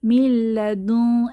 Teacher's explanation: নুন সাকিনের পরে লাম এসেছে মিল্লাদুন তাহলে ইদগম উইদাউট গুন্নাহ গুন্নাহ ছাড়া মিলিয়ে পড়বো